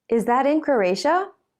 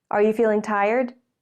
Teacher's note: question you already have some idea of the answer you're asking a question to check something or to confirm that your idea is right in this case the question has a rising tone